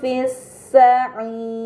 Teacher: pada kata fis-sa'ir terdapat mad bertemu huruf yang disukunkan karena waqaf, ini dinamakan mad arid, maka harus dibaca panjang selama 6 harokat